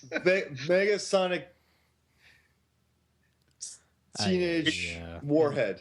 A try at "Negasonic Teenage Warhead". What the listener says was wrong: It's Nega though, not Mega. an N, which is totally. It's Negasonic Teenage Warhead. But you were typo off.